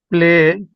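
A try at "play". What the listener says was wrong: একটু একটু ই করবেন প্লে হবে হবে না তা না তবে একটু যেহেতু ওরা এভাবে উচ্চারণ করে তো এজন্য প্লেই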